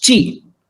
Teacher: So it's not she chi, it's chi. You don't have to pronounce the I there, it's chi. Pronounce number 8 as hachi.